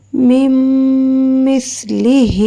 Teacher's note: میم کو میم کے ساتھ ملائیں گے، نون سائلنٹ ہے یہاں پہ